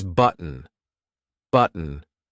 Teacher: Initially, you would pronounce button with a T, but native speakers would often use the glottal stop here. So it's button, button.